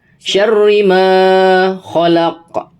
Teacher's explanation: Kemudian di sini di huruf ri itu ada tasydid, maka dibaca double huruf ri-nya, syarri ma. Nah, di ma itu ada harokat fathah bertemu dengan alif, maka ini dihukumi bacaan mad tabi'i, maka panjangnya 2 harokat